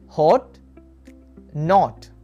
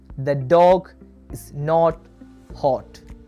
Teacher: our lips will be in a rounded position. The sound is short and open.